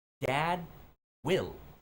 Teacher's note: Es que no se puede escuchar la D, pero existe. ¿Por qué? Porque después de la D es una W.